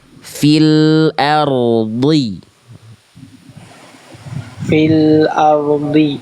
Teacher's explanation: Tapi rnya jangan jadi samar. Rnya getarannya tetap jelas ya.